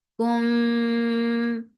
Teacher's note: this is ikhfa shafawi, so keep the sound in your nose.